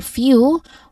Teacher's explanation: the stressed syllable few which has the sound of the letter y in the middle which is shown here in the IP transcription as letter J.